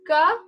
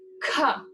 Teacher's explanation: the soft sound is cup and the harder aspirated sound is cup